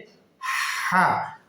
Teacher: হলকের মধ্যম স্থান থেকে হলকের মাঝখান থেকে উচ্চারণ হবে হা আগে বাতাস পরে আওয়াজ হা আগে বাতাস পরে আওয়াজ হা